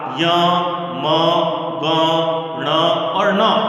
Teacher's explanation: और इसी के साथ में अगला सूत्र पढ़ा गया यमगणना नाम नासिका च, अर्थात य म ग ण और न, ये जो 5 वर्ण हैं अनुनासिक वर्ण हैं, इनका उच्चारण स्थान नासिका तो है ही है